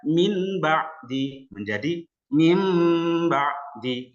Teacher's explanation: ketika ada nun sukun dan tanwin bertemu dengan huruf ba maka dibaca iklab Bagaimana cara membacanya dengan berdengung